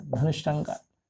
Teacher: विसर्ग के बाद ट ठ आवे तो विसर्ग मूर्धन्य ष में बदल जाता है